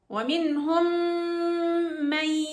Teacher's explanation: إدغام ناقص وليس كامل، لأني بجيب غنة مع الياء